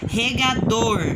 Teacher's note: O dor é a palavra, a letrinha, a sílaba mais forte.